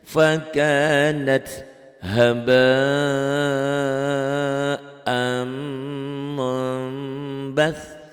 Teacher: bunyi nun matinya berubah menjadi mim mati. Nun sukun jadi mim sukun. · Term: iqlab